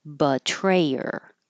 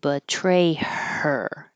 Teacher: So I just took off the H, betrayer, instead of betray her. Just don't make the her air, betrayer.